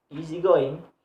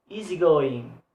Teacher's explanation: so the stress placed on the second word. So going have stress. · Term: word stress